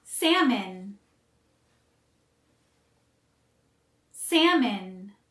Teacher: We don't say salmon. Again, the L is silent, so we say salmon. And the second syllable sounds more like min instead of an O sound.